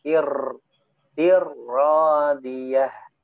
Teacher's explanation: Nah, ra-nya jangan terlalu banyak getaran.